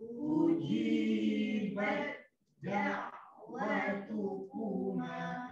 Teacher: Jadi dimasukkan ta kepada huruf dal. Jadi tak baca dah ta. Eh? Terus bunyi dal.